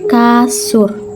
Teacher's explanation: bunyi huruf u kapital apabila berada pada silabel tertutup seperti pada kata kasur